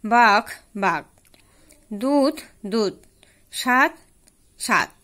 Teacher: সহঘোষ মহাপ্রাণ ধ্বনি প্রায় অল্পপ্রাণ ধ্বনিতে পরিণত হয়